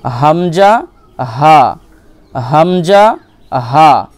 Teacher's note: হালাকের বা কণ্ঠনালীর শুরু হতে উচ্চারিত হয়